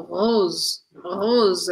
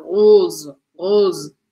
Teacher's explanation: Eu abro um pouco o som do O.